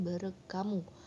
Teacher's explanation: Misalnya dalam bahasa Batak Toba, kata bereng, lihat, kata hamu, kamu, dalam konstruksi gabungan bereng hamu, lihatlah oleh kamu. Baik bunyi ng, dalam kata bereng maupun bunyi h pada kata hamu, keduanya berubah menjadi bunyi k, sehingga konstruksi bereng hamu itu diucapkan bereng kamu, karena bunyi h, dan k merupakan fonem yang berbeda dalam bahasa Batak Toba. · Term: asimilasi fonemis